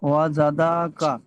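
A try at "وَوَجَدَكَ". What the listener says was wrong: ডাল টান হবে না, ওয়াওয়াজাদাকা, জাদাকা, জাদাকা। ডালটা টান হবে না, ওয়াওয়া জাদাকা, জাদাকা, দাকা, দাকা, দাকা। দা, দয়াকারে দা, কয়াকারে কা, দাকা।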